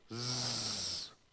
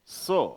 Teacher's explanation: जील का ज बोलते हुए एक हम साउंड है, एक गुंजन है जो से साउंड में नहीं है